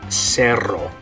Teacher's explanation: the double R, you do what they call rolling the R in Spanish, which is when it makes the R sound. Okay, so one with one R, zero, cerro, but the other one with two R's, you're going to roll the R and it's going to say cerro.